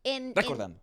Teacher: in the phrase you have time to roll your R's